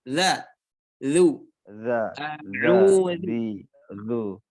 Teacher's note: Ujung lidah dengan ujung gigi atas ya, sedikit digigit ya. Bertemu ujung lidah bertemu dengan ujung gigi atas.